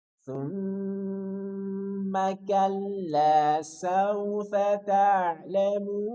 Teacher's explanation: Dan mim bertasydid tahan 3 harokat.